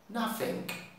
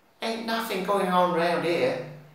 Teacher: the TH will become F and the G might become a K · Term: Cockney